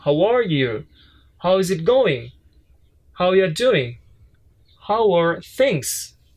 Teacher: it's not the upper tone, it's the falling tone